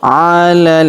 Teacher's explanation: Huruf la langsung sambung ke huruf lam yang berharakat tasydid